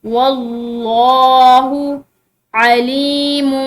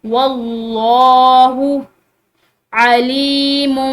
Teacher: یہ لفظ اللہ کی لام جو ہے یہ واو کے مفتوح ہونے کی وجہ سے یعنی واو کے زبر کی وجہ سے موٹی پڑی جا رہی ہے